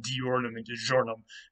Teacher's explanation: You don't need to worry about what that is, but basically what it is the dyeu will kind of merge together to a j sound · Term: palatalization